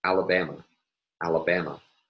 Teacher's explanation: the mid-tone will be attached to the first syllable and the low tone to the last syllable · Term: declarative tone